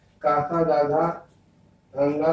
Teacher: काका गागा गंगा का उच्चारण स्थान तो कंठ है